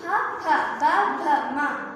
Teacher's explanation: 2 పెదవులు ఒకదానికొకటి తాకుతున్నాయి, అందుకే వీటిని ఓష్ట్యాలు అంటారు